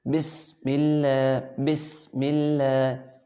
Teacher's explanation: سین کی ادائیگی میں سیٹی کی آواز نکالیں گے۔ بسم اللہ، بسم اللہ، 3 حروف ہیں سیٹی والے، سین، صاد، ز، یہ 3 سیٹی والے حروف ہیں۔